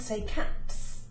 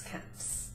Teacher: the T of cat has no voice. Therefore, the S stays voiceless.